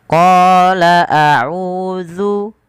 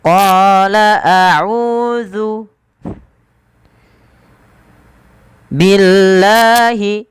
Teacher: qala mad tabi'i 2 harakat, panjangkan qanya, kemudian bedakan antara hamzah dan ain